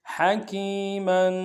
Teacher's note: ہا کو گہرائی سے ادا کریں گے